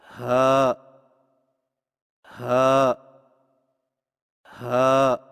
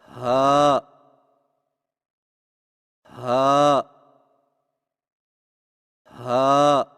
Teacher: ہا کی ادائیگی میں زبان کی جڑ کو حلق کی طرف دبائے بغیر باریک اور بغیر رگڑ کھاتی سانس میں پڑھیں، یعنی ہا ہا ہا۔